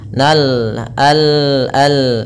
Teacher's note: alif lam yang kita tulis dan kita baca dengan jelas Suara lamnya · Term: alif lam qamariah